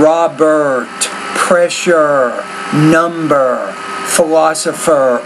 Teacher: You're almost deleting the R. You're almost like saying Robert, pressure, number.